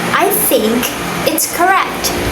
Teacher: So here I'm putting word stress on the word think.